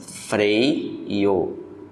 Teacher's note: Tá no E, desceu para o I. Ditongo decrescente.